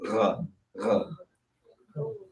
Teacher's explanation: the gha one should be at the bottom of your throat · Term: guttural sounds